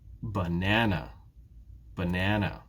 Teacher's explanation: Which syllable in banana is stressed? It's the second syllable.